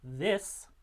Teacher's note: So the initial sound in this is the voiced interdental fricative.